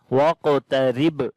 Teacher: On the qaf we read heavy sound again, and then we make qalqala, which is the weak qalqala here. Waqtarib. And on the ba we make again qalqala, and this is strong qalqala now here.